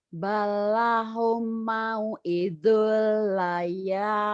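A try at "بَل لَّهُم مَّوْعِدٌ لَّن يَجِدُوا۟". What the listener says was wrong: Balahum. Humnya ditahan. Ada idgham mimi. Ada gunahnya. Balahum mau'idul layyajidu. Layyajidu.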